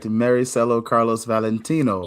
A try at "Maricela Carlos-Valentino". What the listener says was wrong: Close, very close. It's like the R is a D, so Maricela Carlos-Valentino.